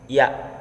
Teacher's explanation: nomor 29 yaitu huruf ya' yaitu mahruji atau tempat luarnya itu tengah-tengah lidah dengan langit-langit